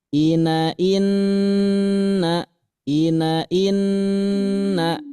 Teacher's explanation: Yang denggung ini menggunakan tiga ketukan lamban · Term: dengung